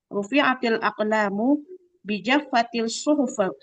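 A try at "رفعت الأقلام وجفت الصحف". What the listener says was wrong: pakai waw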